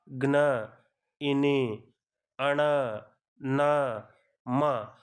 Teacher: ఇక్కడ చూడండి మీరు క్లారిటీగా గమనిస్తే జ్ఞ, ఇని, అణ, న, మ అని మీరు ఈ విధంగా పలికేటప్పుడు ముక్కులో నుంచి గాలి రావటము కొంచెం ఫాస్ట్గా, అదేవిధంగా ముక్కు అనేది కొంచెం వైబ్రేట్ అవ్వటం జరుగుతుందన్నమాట. ముక్కు యొక్క సహాయంతో పలుకుతాం కాబట్టి వీటిల్ని అనునాసికాలు అంటారు.